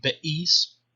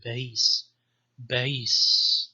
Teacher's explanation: not a solid glottal stop like bais, which you would say in modern standard Arabic, bais, but more like a voiced ha sound